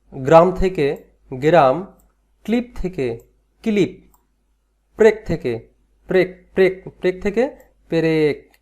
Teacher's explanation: যুক্ত ব্যঞ্জনগুলো এখানে আলাদা হয়ে যাচ্ছে এবং এই আলাদা হওয়ার মাঝখানে আসছে স্বরের আগমন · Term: মধ্য স্বরগম